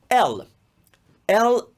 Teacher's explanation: in italian l is a very frontal sound i would relate l in italian to the d sound